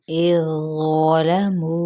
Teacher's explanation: 4 हरकत इसे लंबा करेंगे